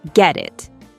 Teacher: It sounds like get it. The t sound from get connects to the vowel sound from it. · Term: linking